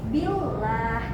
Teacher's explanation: huruf sebelum huruf lam zalalah terdapat kasroh dan dibacanya tipis